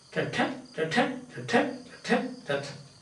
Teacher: It's 5 feet, 5 feet lines where you have got a unstressed, stressed. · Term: Iambic pentameter